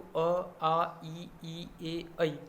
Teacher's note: ओष्ठ की आकृति वृत्त यानी कि गोल नहीं होगी, है ना, सीधे सिंपल ही रहेंगे। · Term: अवृत्ताकार वर्ण